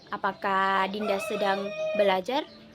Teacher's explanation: Yang kedua yaitu intonasi tanya. Di mana nada yang digunakan dalam intonasi tanya itu nada naik di akhir dan menunjukkan pertanyaan